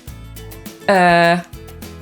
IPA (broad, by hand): ɜː